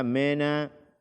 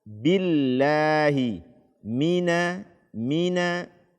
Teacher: membaca kasroh dengan imalah atau antara i dengan e. A'udzu billa, ya, mina dibaca mena.